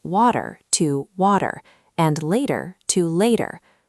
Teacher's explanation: Instead of that puff of air, your tongue lightly taps the roof of your mouth. It sounds like a very soft D. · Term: flap T